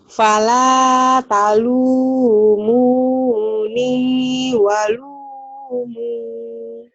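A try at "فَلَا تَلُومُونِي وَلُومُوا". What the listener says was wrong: Panjang mah bener, panjang pendeknya. Cuman lagunya ya. Wala, talu, mo, ne, walo, mo.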